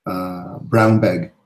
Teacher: the N in brown changes to M because of the next sound, which is B